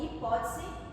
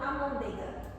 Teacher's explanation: Nesses casos, temos pronúncias como hipótese ou amôndega, em que a palatalização do T e D demonstram uma ocorrência da vogal alta anterior I